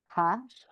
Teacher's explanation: this last letter is just pure aspiration